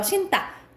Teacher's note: 니은 뒤에 디귿이 된 소리가 나는 거예요